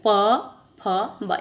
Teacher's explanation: प वर्ग को बोलते हैं तो हमारे ओठ आपस में छूते हैं। प फ ब।